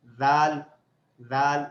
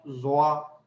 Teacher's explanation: ثا اور ذال کی آواز باریک ہوتی ہے اور ظا کی تھوڑی سی موٹی ہوتی ہے